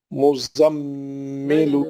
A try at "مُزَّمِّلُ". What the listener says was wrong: یہ مزمل بھائی پھر وہی چکر میں آ گیا. مز رک جاؤ، مز پڑھ کے. ہاں، جلدی نہیں کرنا پڑھنے میں، اطمینان سے.